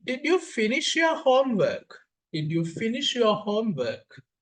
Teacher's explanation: There's a rising terminal juncture at the end of the sentence.